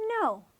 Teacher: When you say no, you from high to low. It's the fourth tone.